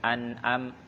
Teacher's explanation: Tambah tekanan ainnya sedikit biar beda dengan hamzah. An'am. Tengah dia tengah tenggorokan.